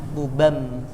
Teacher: iklab itu mengganti bunyi n yang awalnya buban jadi m, bubam gitu.